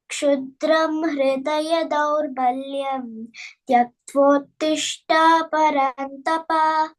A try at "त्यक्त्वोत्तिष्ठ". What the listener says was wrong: no, tishtha Mahaprana.